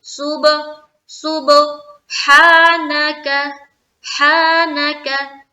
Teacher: हा को स्ट्रेच करना है क्योंकि खड़ा जबर है · सुबह में कलकला करेंगे क्योंकि बा के ऊपर जज्म है और बा हरूफे कलकला में से है।